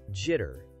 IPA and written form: ˈdʒɪtər (Jitter)